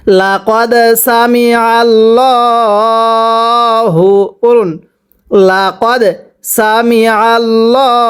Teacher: লাম জবর লা, কফ দাল জবর কদ, লা কদ, দালে যদি সাকিন হয় কলকলা করে পড়তে হয়।